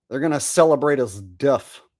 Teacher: They're allowed to say f sound instead of the th sound.